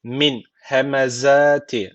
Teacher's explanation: Z keskin burada peltek değil.